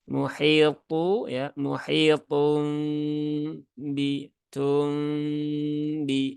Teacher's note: gunahnya ditahan dulu ya tiga harakat muhitu ya muhitum Bum jadi ditahan dulu tiga harakat jangan tergesa-gesa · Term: iqlab